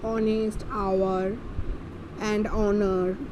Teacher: when spoken these words begin with the vowel sound O, as the letter H is silent in them. समझ में आ गया कि यहाँ पे क्या हो रहा है, वावल साउंड ओ जैसा हो रहा है ना, और H साइलेंट हो जा रहा है, इसीलिए एन यूज़ हो रहा है.